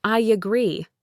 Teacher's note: So a native speaker will naturally, without even a single thought, add a tiny Y sound in between. It sounds like I agree.